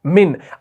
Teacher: अब इस मिन में ये जो नून आप देख रहे हैं ना, इस नून के वक्त क्या हो रहा है? हल्की सी नाक से आवाज निकलती है। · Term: गुन्ना